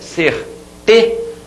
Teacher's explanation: você demora mais a voz aqui nessa sílaba que é a penúltima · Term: paroxítona